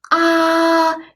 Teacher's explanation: it's a high flat tone that is the first toy in Chinese